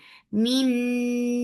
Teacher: Noon will get sifa of gunna. This gunna is akmal, so keep the sound in your nose for a longer time. Min, ni 2 counts long.